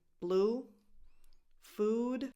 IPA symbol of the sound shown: u